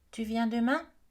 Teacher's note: si vous entendez que ça monte à la fin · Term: l'intonation ascendante